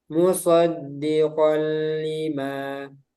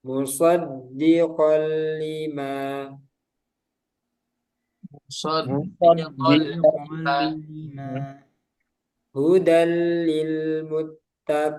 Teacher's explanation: Secara istilah apabila nun sukun atau tanwin bertemu dengan salah satu huruf lam dan ro, cara membacanya diidghamkan atau dimasukkan ke dalam huruf berikutnya tanpa gunnah. Jadi ini tidak perlu ditambah gunnah. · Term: idgham bila gunnah